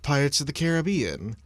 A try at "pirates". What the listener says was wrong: I'm sorry, you did not say pirates. You didn't say pirates, you said pirates. I did not hear an R in pirates.